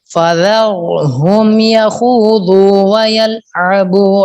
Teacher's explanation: فذر را پر ہے، ذال کو باریک پڑھنے، فا بھی باریک، ذال بھی باریک، را پر دھیان کریں. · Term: ذال باریک